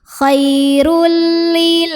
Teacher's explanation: Kemudian di sini ada idgham bila gunnah, karena ada tanwin dhammah yang bertemu dengan huruf lam. Maka tanwin dhammah dileburkan ke lam. Khairul, tanpa dengung, jadi jangan ditahan.